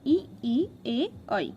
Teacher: ये जो आगे से बोले जाते हैं अग्रभाग से